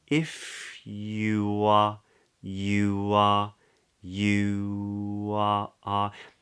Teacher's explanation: we do actually make what's called an intrusive W so there's a linking consonant